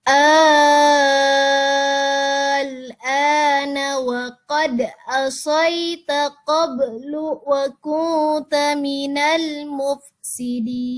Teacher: Mana mat lazim kilmi mukhaffafnya? Ini ada hamzah yang dibaca panjang, mat, terus bertemu dengan sukun.